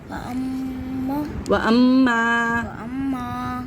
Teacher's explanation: الف مدہ، الف سے پہلے زبر الف مدہ کو کھینچیں گے. وأما وَأَمَّا وأما ایک الف برابر کھینچنا ہے.